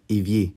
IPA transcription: eˈvje